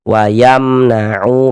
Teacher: Nah, maka berarti hukumnya adalah izhar syafawi kayak gitu. Maka dibaca jelas bunyi mim sukunnya kemudian tidak didengungkan maka baca pendek saja. Wayamnau pendek gitu.